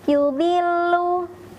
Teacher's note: untuk huruf lam di sini tidak didengungkan, cukup ditekan saja makhrajnya.